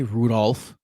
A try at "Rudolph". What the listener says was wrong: The L is silent. You don't say Rudolph.